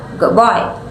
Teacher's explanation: For example, if you say the phrase "good boy" quickly, the D sound in good may change slightly to sound more like a B, so it sounds like good boy. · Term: assimilation